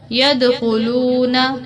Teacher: یدخلون دال پر قلقلہ ہوگا